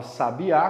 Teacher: Quando a gente fala sabiá, qual que é a mais forte? É o A no final. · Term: a sílaba mais forte